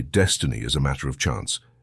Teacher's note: choice one could also say Destiny as a matter of chance emphasizing each syllable equally as if placing the same emphasis on each word